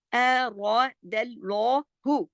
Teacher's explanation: र मोटा, फिर दाल बारीक, फिर अल्लाह के लाम मोटा। र दल लौहु, फिर हा बारीक।